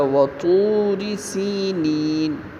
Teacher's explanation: اور اسی طرح وطور سینین، تو کو یہاں موٹی آواز میں پڑھیں گے، را بریک پڑھی جائے گی کیونکہ را کے نیچے زیر ہے۔ سینین، اب یہاں پہ سین کے نیچے زیر ہے اور اس کے بعد یا ساکن ہے، تو یہ یا مدہ کہلائے گی، کیونکہ یا ساکن ما قبل مکسور۔